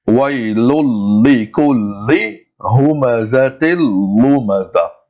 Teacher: No, we don't stretch. We recite it clear because lam comes after tanween. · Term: without gunna